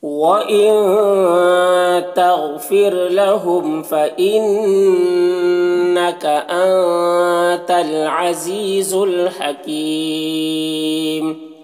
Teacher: لہم کے میم میں اظہار شفوی ہو رہا ہے، سے جلد پڑھنا۔ فإنہ نون مشدد غنہ کے ساتھ میں پڑھیں گے۔ آتا نون میں اخفا ہو رہا، نون کی آواز کو ناک میں چھپا کر پڑھیں گے۔ · حکیم یہاں پر وقف کریں گے تو مد عارض وقفی ہوگا، اور اس میں طول توسط قصر تینوں جائز ہوتا ہے۔